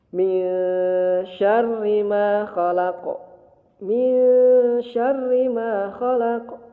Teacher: Nun mati menghadapi syin. Maka dibaca ikhfa. Kemudian ditahan.